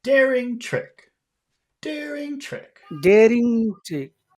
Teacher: because trick is at the end of our phrase, we have to make that go down.